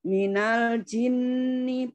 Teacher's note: ninya pendek tapi dengung aja yang panjang di situ